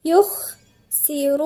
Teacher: الخاء دي ايه من حروف الهمس، يعني في جريان نفس